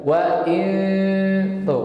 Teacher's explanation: ujung lidah bertemu dengan pangkal gigi seri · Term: ikhfa